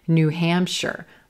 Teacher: I'm going to stress the second word here, Hampshire, Hampshire.